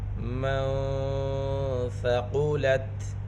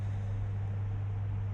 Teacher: قاف حروف مستعلیہ میں سے ہے، قاف کو پر پڑھیں گے